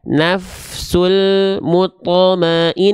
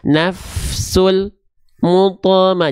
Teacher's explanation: Karena lam punya sifat namanya tawasud. Ya, jadi tetap mengalir sedikit.